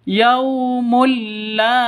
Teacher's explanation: tanwin bertemu dengan lam masuk ke lamnya cara bacanya masuk ke lam tanpa dengung karena idgham bilaghun Nah masuk ke lam tanpa dengung yaumulla beda